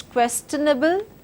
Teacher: basically the stress is in the first part of the word · I follow it with a stress as part of this word, and then I do not stress, I do not stress, and I do not stress. So basically the stress is on the first part of the word.